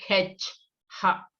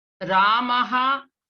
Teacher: you are going to pronounce half Hakara, like H, Ha. That means you are going to exhale, aspirated one.